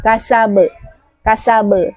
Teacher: Tidak boleh seperti ada huruf hamzah di belakang huruf ba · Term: qalqalah